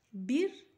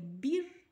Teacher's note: Bir, dia seperti kita nak senyum bila kita nak landing, kita nak wakafkan dia. Bir, maknanya huruf ba baris di bawah sebelum huruf ra, maka harus dibaca dengan bacaan nipis huruf ra-nya.